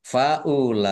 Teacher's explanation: Lam fathah berdiri, mat tobi'i, tetapi karena bertemu dengan huruf hamzah dalam satu kata, maka menjadi mat wajib muttasil. Dibaca panjang, harus lima harokat.